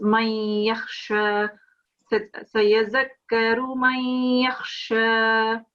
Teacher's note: you were pronouncing the noon sound here, but it's not to be pronounced because we are merging it into the ya. So it's man yakhsha.